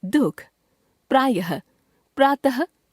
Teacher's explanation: प्रायः यह शब्दों के अंत में आता है और ह जैसा उच्चारण देता है। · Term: विसर्ग